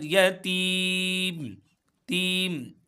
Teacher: या मद्दा है यहां पर हम एक अलिफ के बराबर खींचेंगे अगर वफ करेंगे तो हम तीन से पांच अलिफ तक हम